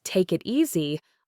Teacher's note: For example, the phrase take it easy often sounds like tuck it easy, where the k sound from take links to the it and the t from it links to the easy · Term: linking consonants to vowels